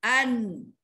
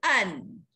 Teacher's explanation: bila kita sebut an, hujung lidah ni menekan ke langit-langit, dia pergi ke langit-langit lah an, sebab nun duduknya hujung lidah menekan ke langit-langit.